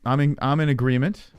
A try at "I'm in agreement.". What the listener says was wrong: There's no N in agreement.